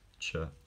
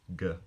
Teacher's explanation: certain consonants places of articulation move closer to the hard palate in you know in the middle of all the upper teeth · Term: palatalization